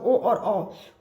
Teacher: ओ और औ का उच्चारण कंठ और ओठ से होता है, कंठ और तालु से नहीं।